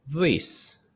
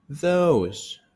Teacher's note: the vocal cords vibrate. Misal üçün this şol, those şolar, brother doğan çigi doğan, özünden uly doğanyň bolsa şoňa brother diýär.